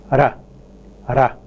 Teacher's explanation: where there is only one single contact by the tip of the tongue